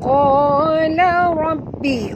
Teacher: ra tebal, ra tafkhim kena ra baris atas kena baca tebal